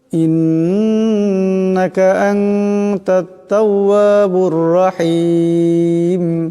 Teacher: ইন্নাকা এখানে নুন মুশাদ্দাদ, আওয়াজটাকে গুণনা করে পড়তে হবে, একালে পূরণ গুণনা হবে।